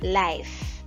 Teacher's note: Al final se siente como que asopla un poquito.